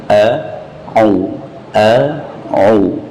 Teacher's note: au diucapkan dari tenggorokan tengah